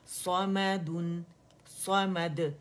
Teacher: اب دن پہ ہم نے لپس کو رول کیا ہے لیکن نون پہ نہیں کریں گے، ان رول ہو جائیں گے.